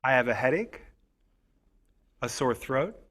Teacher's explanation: rising intonation shows that the list is not finished · Listen to the way my voice goes up on the first two items.